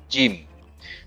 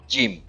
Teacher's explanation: ujung-ujungnya lidah nggak nempel di langit-langit mulut, enggak, tapi tengah-tengahnya ya. Ujung lidah nggak nempel. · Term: huruf jim